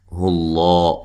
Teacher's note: لفظ اللہ کو موٹا ادا کریں گے، اس سے پہلے پیش ہے